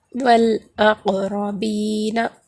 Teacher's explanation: والاقربین، والاقربین، ان کو پڑھیں گے تو ان کا مخرج ٹکر کھا کر الگ ہو جائے گا، یہاں پر حروف خلخلہ ہوگا۔ را پر زبر ہے تو را کو موٹا پڑھا جائے گا